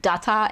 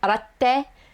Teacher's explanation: if you have a small tsu between two characters, it basically adds like a pause between those two characters.